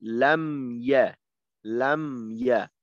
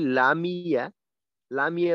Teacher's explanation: তো লামিয়া না লাম ইয়া লাম ইয়া আর যদি বলি লামিয়া লামিয়া বললে কিন্তু মিমে জের হয়ে যায়